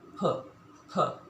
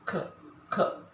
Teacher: that's for p in your lips and k in your throat